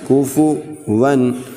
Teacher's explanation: ولم یکن لہ کفوا، کاف کے اوپر پیش ہے، واؤ کے اوپر بھی پیش ہے، کوفو ون واؤ کے اوپر 2 زبر ہیں یعنی تنوین ہے، تو یہاں پر ہم بغیر غنہ کے پڑھیں گے